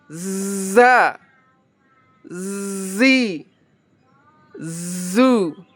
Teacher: Makharijul hurufnya, cara melatihnya biar kita lebih bagus, yaitu dengan mempertemukan gigi atas dan gigi bawah. Gigi seri atas dan gigi bawah bertemu. Z. Coba yuk kita latih. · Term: huruf zain